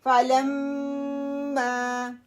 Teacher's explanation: کیونکہ خالی الف آ رہا ہے، یہ 2 کاؤنٹ مد بن رہا ہے، مد طبی. ٹھیک ہے، اس لیے اس کو مجھے لمبا بھی کرنا ہے.